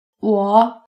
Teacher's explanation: The third tone starts fairly low, drops lower, and then rises up fairly high.